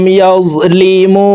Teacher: মু তিন আলিফ টেনে নুনকে সাকিন করে ফেলবো, মধ্যে আরজি তিন আলিফ টেনিয়া পড়িতে হয়